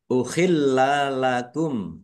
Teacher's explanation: lamnya ada tasdidnya, dibaca double. Ya, ditekan ya, dan ditahan biar tampak doublenya